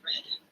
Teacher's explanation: For R sounds, like the R in red, the sides of the tongue are indeed in contact, but with some gap or open approximation in the middle.